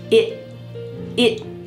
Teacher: my tongue is stopped at the top of my mouth · That word it has a stopped t at the end.